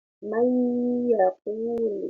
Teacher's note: Jadi huruf nun sukun dimasukkan kepada huruf ya. Mayyaqul. Cara bacanya ini biasanya cara mengidghamkan, cara memasukkannya itu adalah sebanyak 2 harakat atau 1 alif. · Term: idgham bighunna